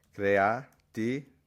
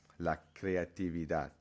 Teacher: notice how I kind of said a B sound on the V